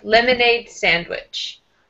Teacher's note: first syllable a little bit stronger